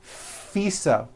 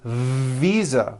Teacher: FISA with an unvoiced F I should have said visa with a voiced V